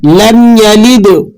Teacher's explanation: یہاں پر میم ساکن کے بعد لفظ یا آ رہا ہے تو آپ یہاں ہرگز غنہ نہیں کریں گے، بلکہ بغیر غننے کے آپ نے یہاں ادا کرنا ہے